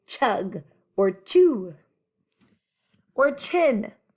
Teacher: the first one is a stopper sound and it's a voice off